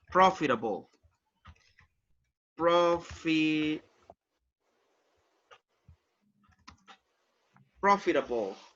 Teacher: You have the stress on the first syllable